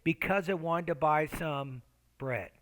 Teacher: And then my tone falls at the end.